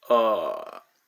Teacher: your voice should crack pronouncing this tone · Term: Third tone